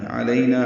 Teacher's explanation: علینا عین وسط حلق سے ادا کریں گے